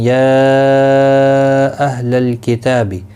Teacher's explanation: یا یہاں پر مد منفصل ہے، 3 الف کی مقدار کے برابر کھینچ کر پڑھیں گے